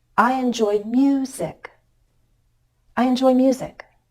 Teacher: I'm making this key change in pitch on the word music because that's my focus word the word that receives the most stress the verb and joy